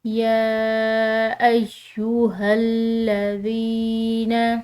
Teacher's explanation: یا مدہ کو ایک الف کے برابر کھنچاؤ سے ادا کیا جاتا ہے۔ تو اس کو ہم ایک الف کے برابر لمبا ادا کریں گے، کھنچاؤ سے پڑھیں گے۔